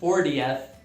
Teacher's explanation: Aqui eu estou pronunciando o T mais fraquinho, 40th. Por causa do inglês americano, que é o que eu falo, você pode pronunciar se ficar mais confortável para você também, 40th.